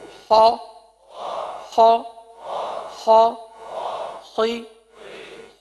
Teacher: हरफ को पुर अदा करना है क्योंकि हुफ मुस्तालिया है